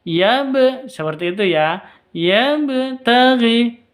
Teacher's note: Kalau sukun maka disebut dengan qalqalah. Harus dipantulkan ke ba-nya.